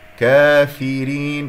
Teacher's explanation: كسرة الفاء والراء والراء مرققة